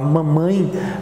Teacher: Quando eu uso para falar mamãe, o meu céu da boca ele se eleva até um certo ponto para permitir que o ar saia pela boca, mas para permitir que o ar saia pelo nariz, porque o mamãe é um som redondo, é um som nasal